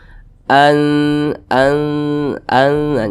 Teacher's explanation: cara bacanya itu disamarkan kemudian didengungkan akan tetapi kadar samarnya itu dia lebih kuat jadi lebih condong berbunyi n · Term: ikhfa Hakiki